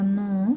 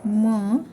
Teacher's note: हे आहेत अनु नासिके म्हणजे यांचा उच्चार हा नाकातून केला जातो